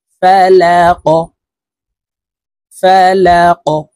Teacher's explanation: এই কফকে ধাক্কা দিয়ে উচ্চারণ করতে হবে। কফ যেহেতু কলকলার হরফ, উপরের দিকে ধাবিত করে ধাক্কা দিয়ে উচ্চারণ করব।